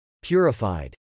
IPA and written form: pjˈʊrəf.aɪd (purified)